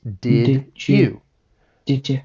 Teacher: Another common sound change is with the D and Y. So when these two sounds assimilate, you get more of a J sound.